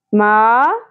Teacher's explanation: الف حرف مدہ ایک الف کے برابر کھینچیں